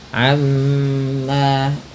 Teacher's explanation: Amma gunnah tahan bunyi mimnya sebagaimana nun berharakat tasydid